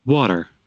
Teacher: Entonces, el inglés americano tiene otra particularidad y es que la T normalmente o en algunas ocasiones cuando hay otros, cuando sigue un sonido de vocal, suena como una R. Entonces, por eso dice water, water.